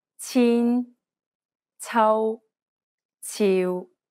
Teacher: you want to release a burst of turbulent air when you're pronouncing this sound. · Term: Cantonese C